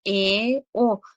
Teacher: tilimiz biroz orqaga tortilyaptida yalpayyapti · til biroz orqaga qaytgan joyda sal kengayyapti, yotib kengayib olyapti. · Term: o'rta keng unlik, oʻrta keng unli